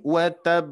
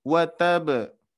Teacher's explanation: harus ada penekanan sedikit harus ada jeda dikarenakan hurufnya ada dua karena tas di itu menandakan dua huruf ya jadi ketika kita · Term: bertasydid